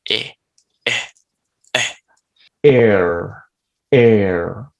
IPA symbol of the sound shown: ɝ